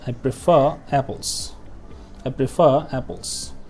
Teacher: since the next word starts with a vowel sound, so then we must pronounce the letter R